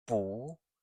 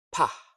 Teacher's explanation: So first a gentle B, 不, and then a stronger P, 怕.